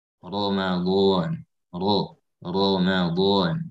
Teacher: ra berharakat fathah, maka di sini jelas harus tafkhim